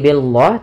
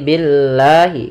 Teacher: lam tipis tidak dibaca dengan lam tebal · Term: lam tarqik